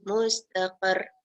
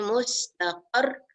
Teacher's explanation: kita stress sikit, kita beratkan sikit akhir dia tu kerana ada bersabdu